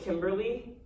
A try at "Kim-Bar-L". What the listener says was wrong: It's pronounced Kim-Bar-L. No E. The E is silent.